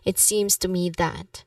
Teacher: So you use a light tone and then you stress on the word seems.